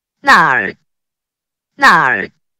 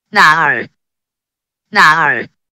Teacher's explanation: The same word, when pronounced with the fourth tone, sounds like a response. When pronounced with the third tone, sounds like a question.